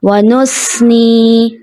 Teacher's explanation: یہاں پہ ثا ہے، ثا کی جگہ سین کی آواز آ جاتی ہے، جیسے ونثنی جو کہ درست نہیں ہے.